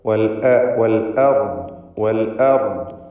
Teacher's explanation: അർദ് എന്ന പദത്തിൽ റാഇനും ദ്വാദിനും തഫ്ഖീം കൊടുക്കണം, തടിപ്പിച്ചുച്ചരിക്കണം. ഹംസക്ക് തഫ്ഖീം വരാതെ ശ്രദ്ധിക്കുക.